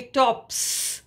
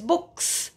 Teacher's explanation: so the plural morpheme is pronounced as s